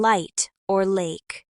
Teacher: The light L happens when the L is at the beginning of a syllable like in light or lake. For this, the tip of your tongue touches the roof of your mouth just behind your teeth and the sound is clean and clear.